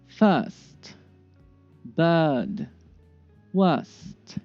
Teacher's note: Part 1, vowel plus R. In general British pronunciation, the R is usually silent in words with vowel plus R.